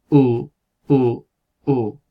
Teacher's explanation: es como una U, pero como sonriendo, estirando los labios en lugar de redondeándolos